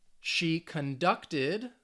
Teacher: She conducted the verb, stress on the second syllable.